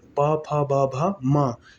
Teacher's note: उ प वर्ग, प फ ब भ म, ये ओष्ठ से उच्चारित वर्ण हो जाएंगे